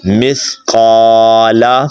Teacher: قاف کو آپ نے موٹا پڑھنا ہے اور سا ادا کرنا ہے